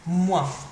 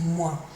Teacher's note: Finishes in your nose, it's quite a nasal sound